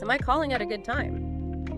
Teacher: Friendly, clear, rising intonation for the yes no question.